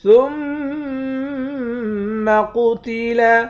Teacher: میم مشدد پر غنہ کریں گے، قاف کو موٹا پڑھیں گے